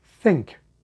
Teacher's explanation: simultaneously your soft palate lowers for the /ŋ/ sound